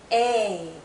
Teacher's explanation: This is a long vowel sound. A. Our mouth is opening more. Our jaw is lowering. A. This sound is also tense.